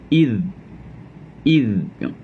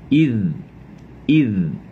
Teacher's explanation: إذ قال إذ, longgarkan mulut, kita jangan terkejang-kejang ke ni, kita nak guna hujung lidah je. Jangan libatkan pangkal lidah nak kena kerah, tak. Hujung lidah je nak guna.